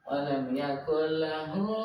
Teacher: Idgham dimasukkan ke huruf lam tanpa dengung.